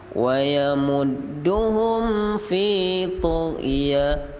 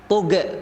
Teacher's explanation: Gha itu bukan qalqalah, maka ditekan saja. Jangan ada tug.